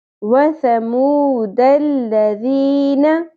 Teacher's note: نون کے اوپر سنگل حرکت ہے، آدھی الف کے برابر کھینچیں گے